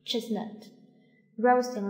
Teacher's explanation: 这一个▁t▁的音后面是一个闭音节▁chestnut▁它可以消失了